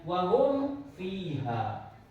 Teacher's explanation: Kaidahnya adalah apabila huruf mim mati bertemu dengan salah satu dari 26 huruf hijaiyah, maka huruf mim dibaca dengan jelas dan terang sesuai dengan makhraj dan sifatnya selama 1 ketukan, kemudian dilanjutkan dengan membaca huruf berikutnya. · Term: idhar safawi